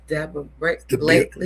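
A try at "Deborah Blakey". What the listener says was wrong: Blakey, no L.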